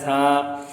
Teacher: ثا، زبان کی نوک یا زبان کا نوک کے ساتھ کا کنارہ جب اوپر کے دانتوں کے کناروں سے لگے اور زبان تھوڑی سی باہر بھی آئے تو یہ پڑھا جاتا ہے ثا۔ نرمی سے پڑھے جانے والے حروف میں شامل ہے، سیٹی نہیں بجائی جاتی